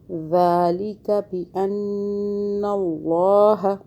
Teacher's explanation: ذال کو سافٹ پڑھیں، نون مشدد پہ گنہ کریں